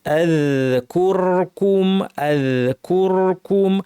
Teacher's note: কুর normal বলার পর আবার ঠোঁটকে গোল করে কুম বলতে হবে।